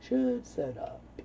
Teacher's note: T moves over, you hear a soft D sound. You should set up by the deadline.